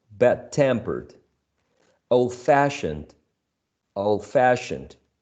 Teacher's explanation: these uh compound adjectives are stressed on the second syllable